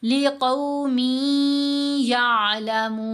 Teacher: मीम को या से मिलाएंगे गुन्ना करते हुए, या को आइन से मिलाना है, आइन और या की आवाज़ मिक्स होकर आनी चाहिए।